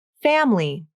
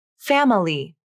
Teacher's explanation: some native speakers may choose to use vowel syncope and drop the unstressed syllable other speakers may prefer to pronounce each of the syllables the